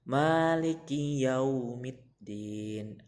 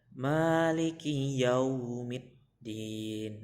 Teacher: Untuk mengucapkan yaunya itu bibirnya agak dimanyunkan ke depan karena di situ ada waw sukun. Maliki yaumiddin agak dinaikkan yau.